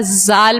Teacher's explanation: जाल भी सीटी वाला हर्फ नहीं है वो तो नरमी से पढ़ने वाला हर्फ है